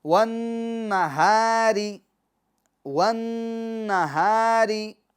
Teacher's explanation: اب یہ جو را ہے اس کو باریک پڑھیں گے، کیوں کہ را کے نیچے زیر ہے